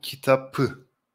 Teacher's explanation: when we attach the accusative case, the p sound becomes the b sound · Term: consonant assimilation